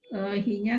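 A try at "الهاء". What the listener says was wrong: Jangan dibilang hi-nya tapi al-ha'u.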